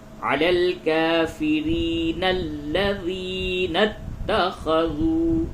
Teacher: یہ الف بھی گر جائے گا اگر آپ پچھلی آیت سے ملا کے پڑھتے ہیں، تو یہ نون کو لام سے ملا دیں گے